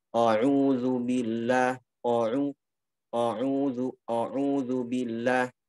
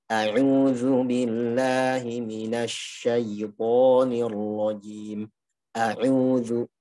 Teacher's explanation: Jadi kalau baca ta'awudz, kita menipiskan hamzah. Jangan sampai menebalkan. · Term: ketipisan hamzah